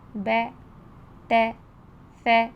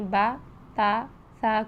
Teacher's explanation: زبر کی ساؤنڈ آ کی جو ساؤنڈ آ رہی ہے اس کو اے کی ساؤنڈ میں مت لے کر جائیں، جیسے با زبر با کو بے، تے، سے، یعنی با تا سا کو بے، تے، سے لٹا کر مت پڑھیں۔